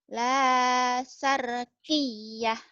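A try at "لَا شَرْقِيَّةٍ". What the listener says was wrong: Bagus tasjidnya tapi shinnya belum keluar Bu. Shin. Ayo shinnya. La syarqiyah.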